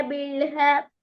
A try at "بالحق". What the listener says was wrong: அதுலயும் அதே திருப்பி ஹக்கு ஹ தான் வருது. ஹ தான் பாயுது. ஆனா பில் ஹக்கு ஹக்கு விளங்குதா வித்தியாசம்? ரசூலஹு பில் ஹக்கு ரெண்டுக்கும் வித்தியாசம் வரும்.